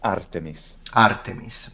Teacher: in ancient Greek please Artemis Artemis okay so it's kind of has a high pitch at first and then it goes down there's a down step